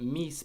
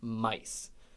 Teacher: a lot of e vowels in the Great Vowel Shift about 500 years ago became eye vowels